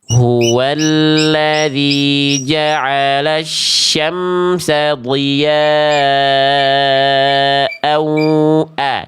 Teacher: diya'au a baru masuk ke idgham biguna pakai sengau dia.